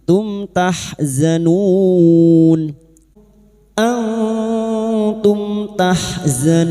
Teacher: Antum mim sukun bertemu ta idhar safawi, mim sukun dibaca jelas tanpa mendengung.